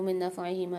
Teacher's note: وَإِثْمُهُمَا أَكْبَرُ مِن نَفْعِهِمَا، یہاں نون ساکن کے بعد نون مشدد آ رہی ہے، تو یہاں پر ادغام مال غنہ والا قاعدہ ہوگا، یہاں ادغام کے ساتھ غنہ کر کے پڑھیں گے